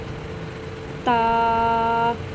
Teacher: بچوں تا کو ہم زبان کو اوپر تالو کے ساتھ لگائیں گے اور تھوڑا سا لمبا کر کے پڑھیں گے